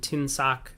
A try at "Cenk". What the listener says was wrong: Yeah, I think there's a C in South's name. Its first name is pronounced Jank, almost like it has a J, even though it's Cenk.